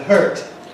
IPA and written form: hɝːt (hurt)